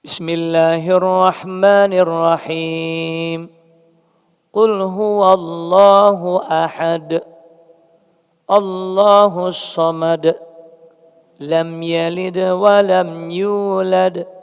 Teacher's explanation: Surat Al-Ikhlas ini malah huruf akhirnya semuanya dal. Dan huruf dal termasuk huruf yang qalqalah. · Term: huruf qalqalah